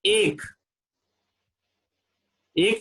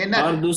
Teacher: छोटी ए नहीं बोलेंगे, ए आई ओ सारा दीर्घ में ही आता है